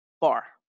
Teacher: the stress or force of pronunciation falls on the last syllable